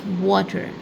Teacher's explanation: Your mouth goes a little round when you pronounce this W.